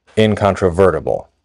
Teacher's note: So in a word like “incontrovertible” the VERT is the primary stress, and we could say the IN has a secondary stress.